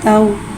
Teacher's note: वाव को होठों की गुलाई के साथ अदा करके पढ़ेंगे। वाव साकिन है, वाव साकिन से पहले ज़बर आ रहा है, वावलीन हो रहा है, लिहाजा वावलीन को बगैर खींचे बगैर झटका दिए नरमी से मारूफ पढ़ेंगे।